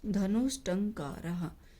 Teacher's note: ये टंकार तो यहाँ बन गया मूर्धन्य शकार